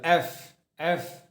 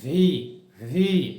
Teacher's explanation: এফ এর সময় বাতাস বের হতে ধরে, এফ এফ। আর ভি এর সময় একটা কম্পন সৃষ্টি হবে, ভি ভি। তারপরে কি আছে?